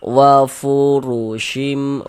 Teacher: maka huruf ra dibaca tafkhim, dibaca tebal, sehingganya pangkal lidah kita atau pangkal lisan kita itu naik terangkat ke atas ketika kita mengucapkannya.